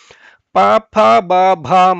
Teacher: ತುಟಿಯಲ್ಲಿ movement ನಿಮಗೆ ಕಾಣುತ್ತೆ ಊ ಉ ಅಂತ ಹೇಳುವಾಗ ತುಟಿ ಹತ್ರಕ್ಕೆ ಬರುತ್ತೆ ಪ ಬ ಭ ಮನ್ನ ಹೇಳುವಾಗ ಪೂರ್ತಿ ತುಟಿ ಒಂದಕ್ಕೊಂದು ತಾಕುತ್ತೆ · ಪ ಫ ಬ ಭ ಮ ಇದನ್ನ ಹೇಳುವಾಗ ಪೂರ್ತಿ ತುಟಿ ಒಂದಕ್ಕೊಂದು ತಾಕತ್ತೆ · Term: ಓಷ್ಠ್ಯಗಳು